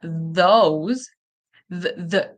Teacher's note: Or if it's voiced like in those the the tongue between your teeth, vibration in your throat.